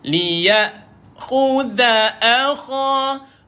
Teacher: Kha kat ujung kerongkong.